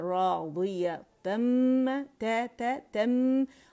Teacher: نون ساکن اور میم پہ زبر تھی لیکن یہاں ادغام ہو گیا، مرج ہوگا، کمپلیٹ مرجنگ ہوگی